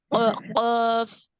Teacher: जुबान की जड़ यानी last part of the tongue ऊपर तालु को लगने से अदा होता है।